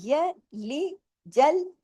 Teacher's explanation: है एक-एक हरकत पढ़नी इसको अगर या ला ऐसे कर देंगे आ की आवाज बीच में नहीं लगानी